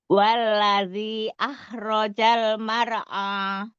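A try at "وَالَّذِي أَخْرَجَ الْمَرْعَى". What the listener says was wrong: Kho itu ah. Pakai kho. Bukan ini. Walladzi akhraja. Nah, itu pakai kho, bukan pakai ha. Jadi ini apa namanya pangkal Iya, pangkal tenggorokan ya. Kalau kho iya dia pangkal tenggorokan yang atas. Dirasain Kho, jadi ada sedikit kotor itunya. Jangan kho, khi, hu. Kho, coba.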